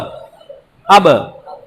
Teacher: হামজা বা জবর আব, আব। ঠোঁটে ঠোঁটে বাড়ি খাবে। বা অক্ষরটা ঠোঁটের থেকে উচ্চারণ হয় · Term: প্রতিধ্বনি